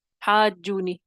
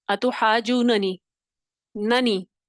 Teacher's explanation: تو آسانی کے لیے کیا کیا گیا؟ پہلے نون کو دوسرے نون میں داخل کیا گیا، ادغام کیا گیا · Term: ادغام کبیر